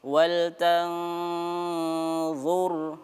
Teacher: Kita samarkan antara huruf nun sukun dengan huruf dha ya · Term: ikhfa